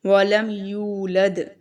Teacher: اب یہاں پر دیکھیں یو میں جو ہے واو مدہ ہے. ٹھیک ہے، واو ساکن سے پہلے پیش ہے تو اس کو ہم تھوڑا لمبا کریں گے